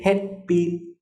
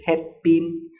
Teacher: In Vietnamese, the p sound is very, very soft